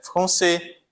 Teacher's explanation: Perceba que eu não pronunciei o S, né?